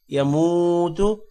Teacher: حی لا، لام کے بعد الف ہے، تھوڑا سا لمبا کریں گے۔ یموت، میم کے بعد واو ہے، تھوڑا سا لمبا ہوگا اور تا کو لمبا نہیں کرنا پیش کی وجہ سے